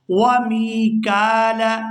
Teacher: یہاں میم کو یا ساکن کے ساتھ ملائیں گے تو کھینچ کر ادا کریں گے اور آگے کاف کو کھڑی زبر کی وجہ سے کھینچ کر ادا کیا جائے گا۔